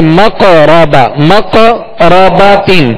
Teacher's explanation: قاف ساکن ہے اور قاف حروف قلقلہ میں سے, لہذا یہاں قلقلہ کریں گے